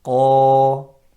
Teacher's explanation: Alif is mufakhama because the qaf before it is thick. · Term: alif mufakhama